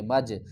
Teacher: قلقلہ کریں گے، جیم کو ہم ہلا کر پڑھیں گے، مج۔